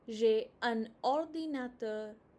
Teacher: ordinateur or-di-na-teur J'ai un ordinateur. There's a liaison connecting the N and the O.